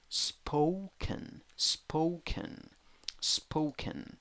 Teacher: two syllables the first syllable is the stressed syllable and in the first syllable you have o wearing a hat